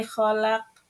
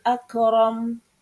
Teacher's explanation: makhraj huruf qaf adalah pangkal lidah bagian dalam, sedangkan makhraj huruf kaf adalah pangkal lidah agak depan